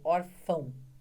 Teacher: o O com som de U é semivogal, porque ele tem o som da semivogal, que é o U